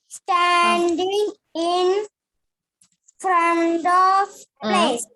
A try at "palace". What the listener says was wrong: Read the word. Is it place? No. Read it properly. P-A. Palace.